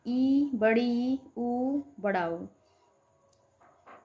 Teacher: संवृत, close, मुख द्वार लगभग पूरा बंद सा होता है। संवृत मतलब क्लोज मतलब बंद।